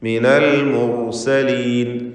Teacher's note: ഹുക്മൻ വജഅലനി മിനൽ മുർസലീൻ, റാഇനെ തഫ്ഖീം ചെയ്യുക. മുർസലീൻ തടിപ്പിച്ച് പറയണം റാഇനെ